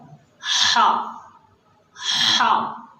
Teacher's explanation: عام لوگ اس کو ہا پڑھتے ہیں، جبکہ یہ ہا نہیں ہے بلکہ یہ حرف ہے ہا۔ ہا، یہ ہمارے گلے کے بیچ سے، جہاں گلے کا کنٹھ ہوتا ہے، یہاں سے یہ حرف نکلتا ہے، ہا ہا۔ یہ تھوڑا مشکل حرف ہے، ناظرین آپ کو تھوڑی محنت کرنی پڑے گی، تھوڑی مشق کرنی پڑے گی۔